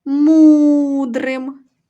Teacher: протягували ми голосний звук у він і є наголошений